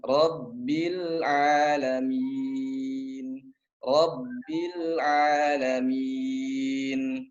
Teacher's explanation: hati-hati Rabbilnya, Rabbil jangan ada pantulan.